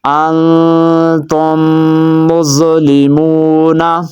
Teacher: اب میم ساکن کے بعد میم آ رہی ہے تو یہ کون سا قاعدہ لگ رہا ہے؟ یہ ادغام شفوی لگ رہا ہے۔